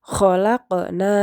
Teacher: Khalaqna dibaca memantul, yaitu qalqalah